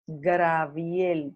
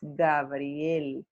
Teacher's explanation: Este se dice muchísimo Graviel, pero en realidad es Gabriel. Pero por alguna razón ocurre esa metátesis de que hay un cambio de R.